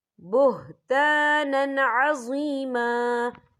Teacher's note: یہ دیکھیں بُهْتَانًا، نون کے اوپر تنوین ہے، تنوین کے بعد جو ہے عین آ رہا ہے، اور عین جو ہے حروف ہلکی کا ورڈ ہے، تو ہم یہاں اظہار کریں گے، ہم اسے بنا غنّے کے پڑھیں گے